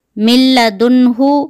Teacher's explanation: نون ساکنہ کے بعد حرف حلقی میں سے ہا آیا ہوا ہے، یہاں پہ نون کو ظاہر کر کے پڑھیں گے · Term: اظہار